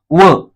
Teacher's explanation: जे वर्ण उच्चार करताना दंत आणि ओष्ट या दोन्ही स्थानातून उच्चारले जातात त्यास दंतष्ट अस म्हणतात